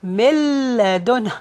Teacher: Originally it was min ladun, but the noon is going to be merged into the lam, and there is no gunna applied. It's only idgham without gunna.